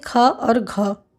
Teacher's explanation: महाप्राण व्यंजनों के उच्चारण में ह का जैसी ध्वनि विशेष रूप से रहती है और श्वास अधिक मात्रा में निकलती है